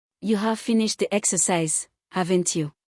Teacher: The rising tone on the tag signals genuine uncertainty. The speaker does not know the answer and wants confirmation.